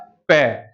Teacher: आपके सबसे पहले दोनों होठ बंद हो जाएंगे